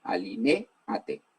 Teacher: En esa palabra la sílaba tónica es la e.